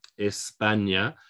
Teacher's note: España, we have to stress on the second syllable because the last syllable is a vowel